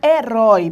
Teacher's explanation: Herói, a palavra herói, percebam, o O aqui é a tua vogal e o I, o som mais brando, é a tua semivogal.